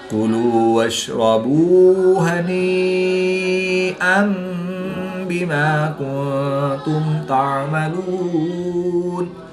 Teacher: یا مدہ کے بعد حمزہ اسی کلمے میں ہے تو یہاں پر مد متصل ہوگی، 3 سے 5 الف تک کھینچ کر پڑھیں گے